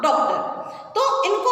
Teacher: इसका जो उच्चारण होगा वो होगा ओ, ना कि आ। इसका होता है ओ। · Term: आगत वर्ण